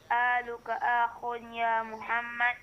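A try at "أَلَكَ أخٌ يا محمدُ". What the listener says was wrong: Sekali lagi, alaka akhun. Ya Muhammadu, hidupkan dalnya.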